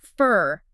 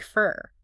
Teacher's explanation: the original vowel sound gets reduced down to this schwa